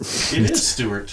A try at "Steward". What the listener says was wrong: No, it's Steward. There's a D in it.